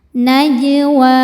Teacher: Najwa mad thobi'i muqaddar. Sebab wau berharakat fathah panjang. Cara bacanya dipanjangkan dua harakat.